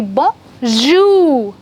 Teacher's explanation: The stress will be on the second syllable.